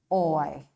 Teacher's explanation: The first sound glides to the second sound and OI says oi. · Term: diphthongs